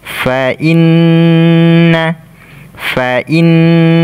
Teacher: Ya, di sini kita baca gunnah, kita baca dengung dan kita tekan karena ada tasydid. Kita baca gunnah, dengung dan ditekan karena ada tasydid.